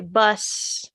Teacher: if you were to say bus without that z, you don't feel the vibration in your throat. That difference is voicing, and so Mhm.